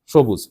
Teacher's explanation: এখানে আছে দন্তস্য কিন্তু বলি তালবস